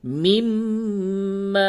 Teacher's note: یہ میم مشدد ہے، اس جگہ پہ غنہ کریں گے